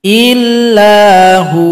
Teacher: cara berhenti pada kata huwa, waw disukunkan, ha yang berada sebelumnya yang dhamma dipanjangkan 2 ketukan karena sudah menjadi mad asli